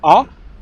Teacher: So my mouth is more open, ah, and the sound is coming from the middle of my mouth. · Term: ah sound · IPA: /Ʌ/